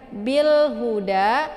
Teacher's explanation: Bil huda, bil ini ada alif lam al qamariyah. Ya, sesudah alif lam ada huruf qamariyahnya yaitu ha ya. Jadi cara bacanya itu jelas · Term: izhar qamariyah